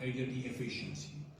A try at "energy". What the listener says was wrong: Energy. Again, the j is problematic.